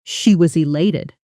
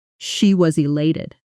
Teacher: Fast and natural, native speakers often blend was elated together. So, it almost sounds like she was elated.